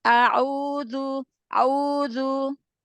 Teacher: Bukan kurang panjang al-jaufnya. A'udzu, keluarkan A'u- dari rongga mulut, jangan masuk ke hidung, jangan terbagi ke hidung.